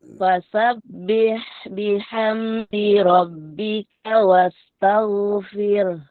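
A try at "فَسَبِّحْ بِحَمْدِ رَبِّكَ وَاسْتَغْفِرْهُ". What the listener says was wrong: Ro-nya tipis.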